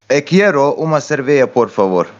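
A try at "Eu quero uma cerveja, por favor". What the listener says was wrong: Yeah, the first word, it's eu, and the last one is cerveja. Like you missed the ja. Cerveja.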